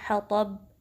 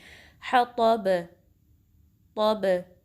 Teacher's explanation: اب حطب میں بھی آپ دیکھ سکتے ہیں کہ با ساکن ہو رہا ہے، ہم نے سٹاپ کیا یہاں پر تو با جو آواز ہے وہ پلٹ کے آئے گی، ہم اس کو صرف ایسے نہیں پڑھیں گے حطب بس روک دیا نہیں، حطب، طب، تو آپ دیکھ سکتے ہیں با کی ساؤنڈ پہ فوکس کریں، پلٹ کے آواز آتی ہے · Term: کلکلا